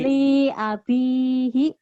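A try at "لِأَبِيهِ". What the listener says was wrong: Li-nya pendek. Li abihi.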